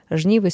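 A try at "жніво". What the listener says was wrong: Ты на О ударение не ставишь, аповеды, жниво.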